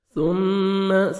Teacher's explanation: میم مشدد، غنہ کریں گے، نوز میں ساؤنڈ لے کے جائیں گے. اماتہ الف مدہ، 1 سیکنڈ میم کو کھینچیں گے، تا کو باریک پڑھیں گے.